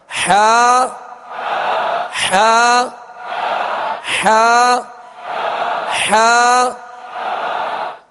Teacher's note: اس کو وسط حلق سے بالکل ایزی ادا کرنا ہے، تکلف سے ادا نہیں کرنا